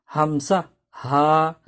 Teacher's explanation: এক নম্বর মাখরাজ হলকের শুরু হইতে হামজা হা